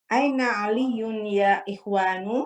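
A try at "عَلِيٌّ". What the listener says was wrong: Aliyun, jangan diidghamkan ya. Nah, kalau idgham itu di ilmu tajwid. Jangan aliyu ya, aliyun.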